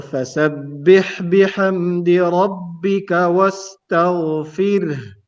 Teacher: If you can pay attention to the word wastaghfir, the ghain is heavy and smooth, ra is light, and the ha has to be more clear